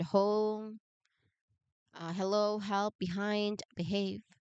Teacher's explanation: You start hot. You start with a gentle puff of air and immediate transition into an a vowel.